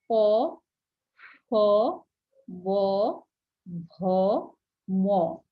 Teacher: আমরা যখন উচ্চারণ করছি আমাদের দুই ঠোঁট কি হচ্ছে লেগে যাচ্ছে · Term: অষ্ঠ ধ্বনি